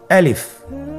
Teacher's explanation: আলিফ হরফটি মাখরাজ হলো আপনার মুখের শূন্যস্থান থেকে। গলা এবং মুখের শূন্যস্থান হতে আলিফ হরফটি উচ্চারিত হয়